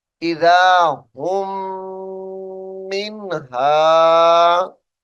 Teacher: हुम मीम साकिन को छोड़ेंगे और हा को मीम मुशद्दद से मिलाएंगे और गुन्ना करेंगे